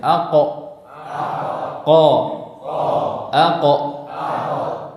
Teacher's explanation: huruf qaf dia dari pangkal lidah, jadi lebih keluar makhrajnya daripada huruf ghain dan kha. Perhatikan ini lidah ya masih di langit-langit lunak. · Pangkal lidah bertemu dengan langit-langit lunak. · huruf qaf makhrajnya tidak di pangkal tenggorokan tapi di lidah, di pangkal lidah